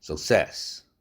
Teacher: success, s 액센트 있으니까 아주 약화된 슈아 사운드입니다